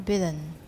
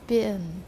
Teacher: t is replaced by a glottal stop when it occurs before an alveolar nasal